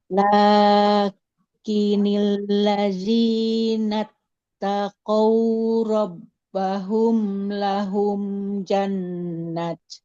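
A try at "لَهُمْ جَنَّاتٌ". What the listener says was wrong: Nunnya panjang. Lahum jannat. Jannatun tajri. Tanwin ya, Bu ya. Domatain.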